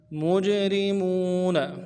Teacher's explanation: ہے، ایہا المجرمون، مجرمون، میم کو جیم کے ساتھ ملانا ہے، جیم کے اوپر ساکن ہو تو قلقلہ ہے ہوگا، قلقلہ کریں گے